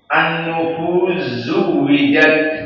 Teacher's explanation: dihapuskan huruf sin masuk kepada zain, jadi an-nufuz zuwijat dan tak kepada sin. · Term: idgham kabir